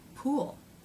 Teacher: so the tongue has to pull back a little bit the tip doesn't touch anything before the tip moves up to make the l sound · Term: dark l